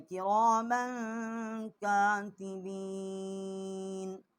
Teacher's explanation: کرامن میم کے اوپر 2 زبر ہیں، اس کے اوپر ہم نے غنہ کیا ہے، آگے حروف حلقی نہیں ہے۔